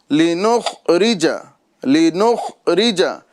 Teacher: यानी ख में कलकला नहीं करना है